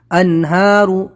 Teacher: نون ساکن کے بعد ہا ہے تو ہلکی لیٹر اظہار کریں گے یہاں پر